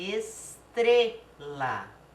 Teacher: a sílaba tônica também não é última é a penúltima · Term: paroxítona